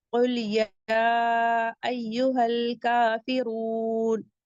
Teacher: र को भी हैवी पढ़ेंगे क्योंकि र पे जम्मा है। वाऊ मद्दा है।